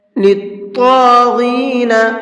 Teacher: طا کو اور غین کو دونوں کو منہ بھر کے پڑھیں گے